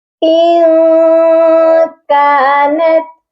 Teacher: ہم نے اپنی آواز کو ناک میں چھپانا ہے، پراپر غنہ نہیں کرنا۔ یہاں پر زبان کو اوپر تالو کے ساتھ سختی سے نہیں لگانا، بلکہ ہم نے یہاں پر سافٹ غنہ کرنا ہے، آواز کو ناک میں چھپا کر غنہ کرنا ہے۔ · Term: اخفا